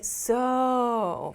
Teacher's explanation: when they say so, they make the O sound really long to emphasize even more